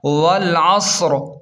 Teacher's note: را زیر ری، والعصر، وقف کی صورت میں را ساکن ہو جائے گا اور صاد کے ساتھ موٹا پڑھا جائے گا